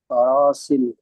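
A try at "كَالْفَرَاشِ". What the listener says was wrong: হ্যাঁ, এর একটা সিন একটা শিন। যার উপরে তিনটে নোক্তা থাকে সেটি হয় কি, শিন হয়।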